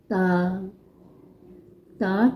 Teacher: زبان کی نوک جب ثنایا علیہ یعنی سامنے والے اوپر کے دانتوں کی جڑ سے لگے تو یہ حروف ادا کیا جاتا ہے